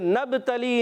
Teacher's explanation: نون کو با سے ملائیں گے، با میں قلقلہ ہوگا، اور پھر قلقلہ سے با.